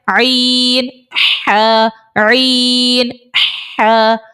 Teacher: عین اور حا یہ حلق کے درمیان والے حصے سے ادا ہوتا ہے، وسط حلق سے، یعنی حلق کا جو نیچے والا حصہ جہاں سے ہم حمزہ ہا نکال رہے ہیں اس سے تھوڑا سا آپ اوپر آ جائیں، حلق کا درمیانہ حصہ آپ کو مل جائے گا، وہاں سے عین اور حا دونوں نکلتے ہیں۔